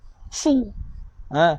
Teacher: Sad baris depan ni kena lagi tebal, tuan-tuan. Jadi kalau kita baca dengan fi sudu, fi su sudu, salah. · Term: huruf sad